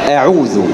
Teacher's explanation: تخرج الهمزة من أقصى الحلق، أي من أبعد شيء في الحلق، ولا تأتي مفخمة أبدا